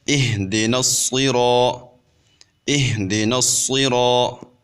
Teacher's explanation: اب یہاں پہ بھی الف مدہ آ رہا ہے، یعنی الف سے پہلے حرف کے اوپر جب زبر آ جائے تو وہ الف مدہ بن جاتا ہے۔ تو ہم را کو ایک الف کے برابر لمبا کریں گے الف مدہ کی وجہ سے۔ ویسے تو زبر والے حرف کو لمبا نہیں کیا جاتا، لیکن یہاں پہ چونکہ الف مدہ آ رہا ہے تو الف مدہ کی وجہ سے ہم را کو لمبا کریں گے۔